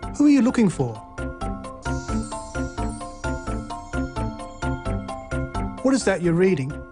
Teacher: So a falling tone is used for wh and how questions.